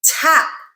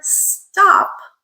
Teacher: for our tap we are adding aspiration so we are going T that added breath tap but in the word stop we do not have aspiration so there is no aspiration in stop it is that pure